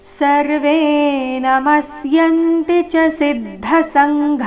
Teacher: ಮುಂದೆ ಸಂಘ ನಲ್ಲಿ ಕೊನೆಗೆ ಘ ಮಹಾಪ್ರಾಣ ದೀರ್ಘ